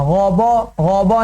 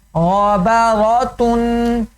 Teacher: غین کو یا را کو موٹا کرتے ہو با کو موٹا نہیں کرنا